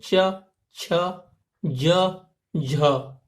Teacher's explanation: इन चारों को जब हम बोलते हैं तो इनको बोलने में थोड़ी सी दिक्कत होती है, आवाज जो है कुछ ज्यादा संघर्ष के साथ निकलती है, ठीक है। तो इसलिए इनको हम स्पर्श संघर्षी नाम दिया है।